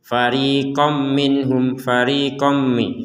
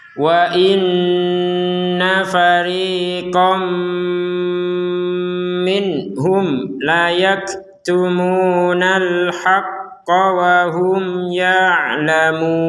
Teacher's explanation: Maka kita cara membacanya adalah masukkan tanwin ini, fathatainnya dimasukkan kepada huruf mim, sehingga kita membacanya fariqom minhum. Kom, jadi kom bukan farikon lagi, farikon itu kan jelas kalau farikon. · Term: dengungan